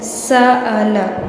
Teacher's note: سین کو آپ نے سیٹی کے ساتھ ادا کرنا ہے